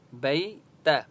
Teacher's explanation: بئی یا لین ہے اس لیے با کو لمبا نہیں کریں گے